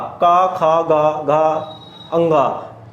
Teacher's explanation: यानी कि कै वर्ग जो होता है, कै वर्ग होता है यानी कि जिनमें हमारे गले का प्रयोग होता है